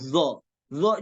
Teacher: gigi seri atas habis itu selanjutnya do do juga sama posisinya ujung lidah dengan dua gigi seri atas ditempelkan